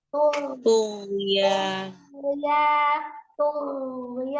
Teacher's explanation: Suaranya tetap mengalir, ghain itu ternyata sifatnya juga rokoah, walaupun dia termasuk huruf yang tebal. Jadi dialirkan, yang طغيان tughyanihim ya'mahun. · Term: huruf ghain